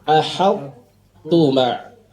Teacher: To-nya kan sifatnya tebal, sedangkan tak tipis. Maka tebal tipisnya ini perlu diperhatikan betul.